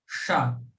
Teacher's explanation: मूर्धन्य सा, यानी मूर्धा से उत्पन्न हो, यानी जो ट वर्ग का स्थान है वह मूर्धा कहलाता है